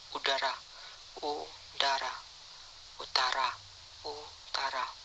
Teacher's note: Kriteria: vokal belakang, tinggi atas, bundar, tertutup. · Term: Vokal U